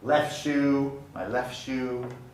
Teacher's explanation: the t does not get pronounced